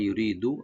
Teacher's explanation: তো ইউরিদু ইয়াটাকে রাইট দিবেন, ইউ রি, রাটাকে পাতলা করে একালি টানবো, দালে কোনো টান নাই